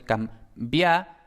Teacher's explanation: Y aquí tenemos la M, que por supuesto pues es M, y luego la B permanece oclusiva porque va justo detrás de nasal